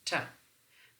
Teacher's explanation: the tip of the tongue is basically meeting or touching the teeth ridge